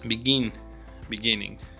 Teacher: begin stresses on the second syllable